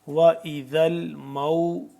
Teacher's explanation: حمزہ الٹا پیش ہو گیا تو یہ واو جتنی مقدار میں ہی لمبا ہوگا یعنی کہ ایک الف کے برابر لمبا ہوگا